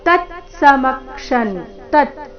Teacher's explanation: ತತ್ ಮೊದಲು ಪೂರ್ತಿತ ನಂತರ ಅರ್ಧ ತಕಾರ